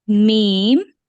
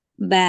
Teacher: மீம் வெளிப்புற உதடு, ப உட்புற பகுதியினுடைய உதடு, வாயை குவிச்சு திருப்பி சவுண்ட உருவாக்கி பேக்ல ஓபன் பண்ணிட்டு திருப்பி பேக் டு ஃபார்ம் அதே இடத்துக்கு கொண்டு வந்து வைக்கிறது.